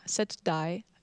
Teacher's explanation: the G sound is not really pronounced. It's very soft.